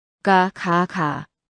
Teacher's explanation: 정말로 혓뿌리가 목구멍 쪽으로 올라갔습니다. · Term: 기역